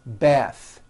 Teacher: The word bath is a noun with an unvoiced TH.